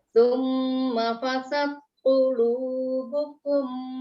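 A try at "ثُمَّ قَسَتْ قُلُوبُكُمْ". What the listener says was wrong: Kosat. Bukan fasad, kosat.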